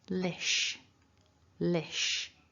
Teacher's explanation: So the second syllable then, we've got the l, which is at the front, l, a short I, and then a sh.